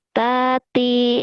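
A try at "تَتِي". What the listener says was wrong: Nggak ada yang panjang. Tati. Gitu.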